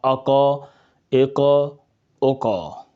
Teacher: نقطے والے قاف جب ساکن ہوگا تو اس میں قلقلہ خوب ظاہر ہوگا